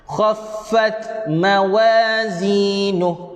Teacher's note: Huruf ta mati ada sifat hams. Sifat hams itu berangin yang mana kita kena keluarkan secara manual.